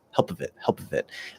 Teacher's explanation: there's a tiny little sound in between it's like a sort of a little tiny schwa still left in there uh because the p has to sort of explode out a